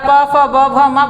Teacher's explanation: अगर आप प, फ, ब, भ, म बोलते हैं तो आपके ओठ जो है वो चिपकते हैं, तो इनका उच्चारण स्थान ओष्ठ होता है।